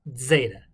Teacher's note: zeta is a combination of d and z in the english